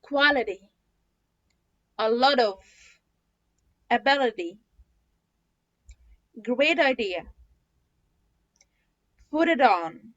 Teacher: فكده ال T between two vowels هتبقى D